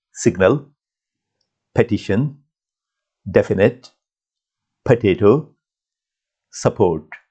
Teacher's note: all these vowels they give only one sound a sound that's represented by schwa in linguistics so that's something really really important this vowel sound is very